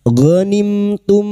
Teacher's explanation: Bertemunya mim sukun dengan huruf hijaiyah selain mim dan ba. Maka mim sukun dibaca jelas tanpa mendengung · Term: idhar syafawi